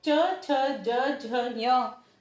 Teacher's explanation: च छ ज झ ञ का उच्चारण करते हैं तो जीभ हमारे तालु को स्पर्श करती है, बाहर निकल, तालु को स्पर्श करती है, तो ये तालव्य कहलाते हैं, तो ये व्यंजन तालव्य कहलाते हैं।